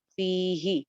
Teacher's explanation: وذکرو ما فیہ، ما ایک الف لمبا، فیہ، فی ایک الف لمبا جبکہ ہی سنگل حرکت